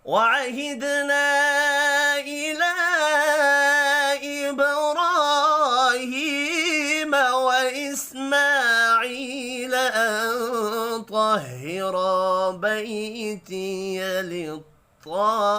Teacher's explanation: دال ساکن پر قلقلہ کریں گے، الف کے اوپر چھوٹی مد ہے، تین الف کے برابر کھینچ کر پڑھنا ہے ، لام کے اوپر بھی چھوٹی مد ہے، تین الف کے